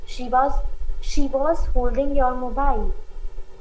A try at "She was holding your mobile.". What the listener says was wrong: Beta, ye vaaz nahi bolte. इसको ओ के sound में लेकर आओ.